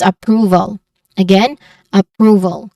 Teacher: Pronunciation wise, you start with a schwa sound, a. Second syllable is prove. So there's just long oo sound here. And then um val with a schwa sound at the middle.